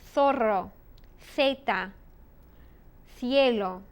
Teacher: in Spain, the letter Z and C, when it's like an S, they use the theta sound.